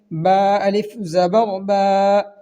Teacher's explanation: الف مدہ کو 1 الف کے برابر کھینچ کر پڑھیں گے